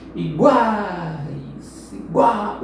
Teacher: o A fica mais tempo soando. O U e o I são coadjuvantes. Então aqui, semivogal, vogal e semivogal. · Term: tritongo